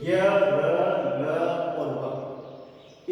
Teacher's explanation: य, र, ल, व में स्वर तंत्रियों में कंपन होता है, इसलिए इसको अपन घोष करते हैं।